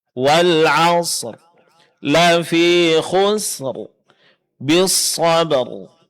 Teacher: huruf ra yang ditebalkan kalau kita berhenti pada setiap akhir ayat yang ada dalam surat Al-Asr